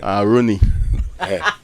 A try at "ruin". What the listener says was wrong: Not, so it's 2 syllables. You have the R-U, ruin. So don't bring any Rooney here.